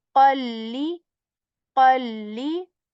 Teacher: Back part of the tongue, it touches the soft palate with strength. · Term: heavy letter